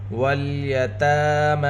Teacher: تا اور میم کے اوپر کھڑا زبر ہے، دونوں کی آواز کو دو حرکت کے برابر کھینچ کر پڑھیں گے